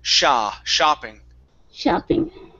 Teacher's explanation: Next up is the O sound in shopping. Instead of shopping, it's ah. Open up your mouth.